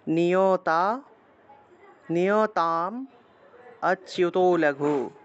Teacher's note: তাম ময়ের উচ্চারণ একটা অ চলে আসলো, মকে আমরা হসন্ত দিয়ে আগের অংশের সাথে উচ্চারণ করলাম।